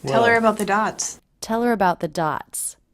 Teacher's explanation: It's not uncommon to drop the beginning H in unaccented words like her, him, and his. If you do this, always link it to the word before. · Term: dropped H